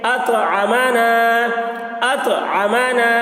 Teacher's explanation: اطعم نون الف زبر نا الف سے پہلے زبر ہے الف مدہ ہوا اس لیے الف مدہ کو ایک الف کے برابر کھینچ کر پڑھیں گے